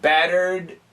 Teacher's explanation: kind of a quick, short D